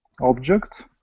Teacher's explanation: So the stress in the noun is on the first syllable.